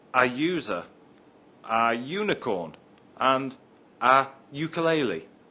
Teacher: begins with a u but is pronounced with a y sound at the beginning